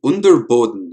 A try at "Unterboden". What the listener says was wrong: Unterboden. There's no T. probably close enough. Pronunciation should be the same.